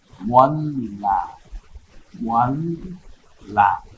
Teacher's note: লামটা দুইবার উচ্চারণ হয়ে গেল, লটা না।